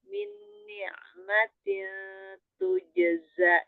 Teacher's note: Zai ujung lidah hampir bertemu dengan gigi sari bawah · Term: huruf zai